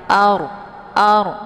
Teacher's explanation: ra-nya ditebalkan ya. Jadi ard, posisi ujung lidahnya terangkat ke langit. Ar. Jadi jangan ar ya, dengan mulut yang terbuka. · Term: ra sukun